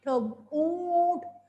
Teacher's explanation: जैसे मैं वर्ड बोलती हूँ ऊंट, नाक में ऊंट, मुंह और नाक दोनों का प्रयोग होता है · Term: अनुनासिक